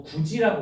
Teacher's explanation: 디귿이 지읒으로 바뀐 거야. 발음을 편하게 하기 위해서